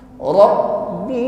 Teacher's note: Ra tebal ditekan pada huruf ba yang bertasydid.